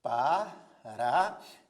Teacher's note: ocorre o tritongo a semivogal u a vogal a e a semivogal i portanto Aqui nós temos um tritongo em Paraguai a mesma coisa